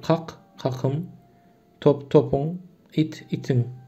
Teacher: K, P, T, Ç sesleri G, B, D, C sesine değişmemiş.